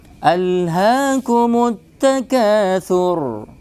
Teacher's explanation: Ra harus tebal karena sebelumnya dhammah bukan kasrah.